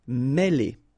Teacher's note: accent circonflexe here on the top of E, and it will give you the sound E, really open